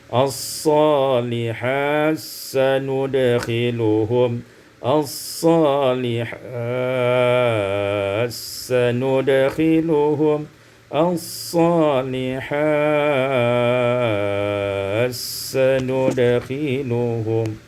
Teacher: Pada ayat yang ke-57, as-salihati sanudkhiluhum, idghamut ta fi sin, diidghamkan ta pada sin menjadi as-salihat sanudkhiluhum, as-salihat sanudkhiluhum, as-salihat sanudkhiluhum.